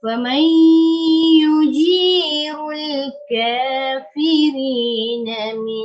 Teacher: Idgham ma'al gunnah juga 2 harakat dengung. Faman ya dia tak bunyi nun dah, dia bunyi ya.